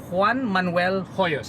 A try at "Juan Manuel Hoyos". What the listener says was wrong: No, the H is silent. But actually it will be Juan Manuel Hoyos.